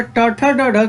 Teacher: अगर ट ठ ड ढ की बात किया जाए तो ये आपका मूर्धन्य होती हैं